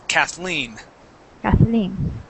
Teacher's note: it's pronounced with the accent at the end